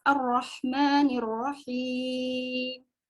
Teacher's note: Lamnya ditandai dengan sukun. Oke, kalau alif lam syamsiah, lamnya tidak dibaca jelas.